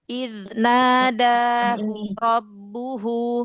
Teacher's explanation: Hu yang pertama jangan panjang, hu yang kedua yang panjang.